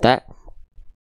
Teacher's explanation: Huruf ta punya sifat hams, tapi kadar nafasnya itu percikan nafas bukan mengalir. Sedangkan hams itu secara dasar artinya bukan percikan, tapi mengalirnya nafas.